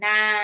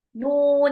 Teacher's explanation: Mad lazim harfi musyba ini dibaca enam harakat ya. Huruf-hurufnya itu adalah huruf nun di surah Alqalam ya.